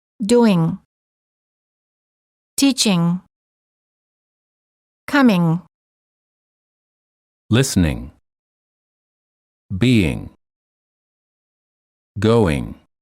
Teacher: thing the tip of the tongue is down not touching anywhere the back of the tongue is up touching the soft pallet which is located in the back of your mouth